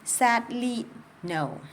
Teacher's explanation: I will stress the first syllable. I would have emphasis on sad not only. I don't say sadly I say sadly.